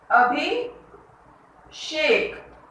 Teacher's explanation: मूर्धन्य श बोलते हैं, मूर्धा से बोला जाता है, मूर्धा से इसका उच्चारण होता है